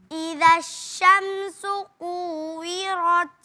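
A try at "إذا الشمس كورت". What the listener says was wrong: Eee tadi ra-nya kurang tebal, sekarang lebih tebal. Sudah sudah bagus ya.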